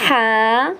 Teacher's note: ہا کو ادا کرتے وقت جو حلق کا درمیانی حصہ ہے اس سے ہمیں آواز نکالنی ہے